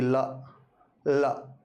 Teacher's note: जीभ तालु से चिपकती है ला ला, और जैसे ही हम इसका उच्चारण करते हैं, बोलते हैं, तो तुरंत प्राणवायु जीभ के दोनों ओर से बाहर निकल जाएगी। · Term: पार्श्विक ध्वनि